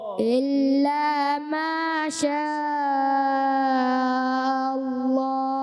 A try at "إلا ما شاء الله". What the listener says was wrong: ماشاء اللہ میں حمزہ اور تھوڑا واضح کریں. سنقرئك فلا تنسى إلا ما شاء الله.